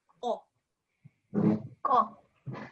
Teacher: Don't forget this is a qaf, okay? Comes from the back of your mouth, okay? Qaf.